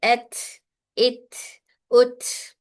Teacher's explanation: यह हर्फ अपने मखरज से मिलकर सिफत शिदा शिदा अदा करता है फिर एयर फ्लो के साथ सिफत हमस अदा होगा · यहाँ पर हमें स्ट्रांगली बंद नहीं करना है, बल्कि यहाँ पर कमजोर इंहिसार है मखरज का, हल्के से बंद होता है मखरज, इसकी वजह से यहाँ पर कलकला नहीं हो रहा, बल्कि यहाँ पर एयर फ्लो हो रहा है